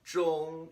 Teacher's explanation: I want to stay high, 中, and stay flat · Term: first tone